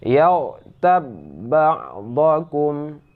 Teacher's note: Huruf ba yang mati ini tidak lagi menjadi huruf qalqalah, akan tetapi langsung dimasukkan ke dalam huruf ba yang ada di depannya. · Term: idgham mutamatsilain